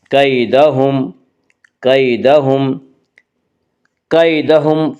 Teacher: یالین کو نرم آواز کے ساتھ جلدی پڑھیں گے